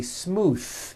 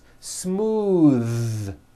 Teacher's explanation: believe it or not the th sound in smooth is voiced